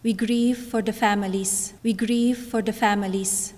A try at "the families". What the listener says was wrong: Do you hear that? The families. The families. This is a really, really common way that learners of English often pronounce the TH sound, because in many languages around the world, you don't have sounds where the tongue comes out in between the teeth.